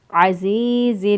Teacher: زا کی ادائیگی میں سیٹی جیسی آواز آنی چاہیے